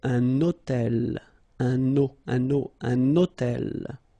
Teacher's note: you can see that I'm making this little liaison, this little link between the two.